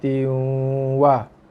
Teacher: masuk ke dalam waw dengan masuk yang lembut berserta dengung.